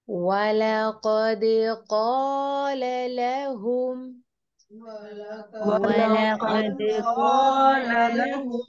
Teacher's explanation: قاف کو یہاں پر پور پڑھیں گے، دال کے اوپر ہم قلقلہ کریں گے کیونکہ یہ حروف قلقلہ میں سے ہیں۔